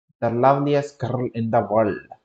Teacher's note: sometimes you'll have an extra syllable on the word so that girl becomes guddle